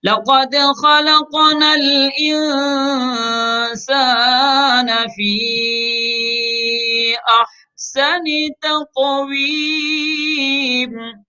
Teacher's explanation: فی میں یا کے اوپر دیکھیے مد کی علامت ہے، چھوٹی علامت، اس کو مد منفصل کہتے ہیں، تو خوب لمبا کر کے پڑھیں گے